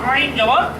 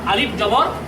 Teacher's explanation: এটি কন্ঠের মাঝখান থেকে এবং উচ্চারণ করার সময় কন্ঠটাকে একটু চিপা ধরতে হবে